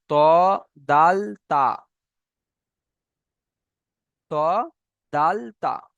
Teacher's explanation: 11 নম্বর মাখরাজ, সে জিভের আগা এবং সামনের উপরে দুই দাঁতের গড়ার সাথে লাগিয়ে উচ্চারণ হয়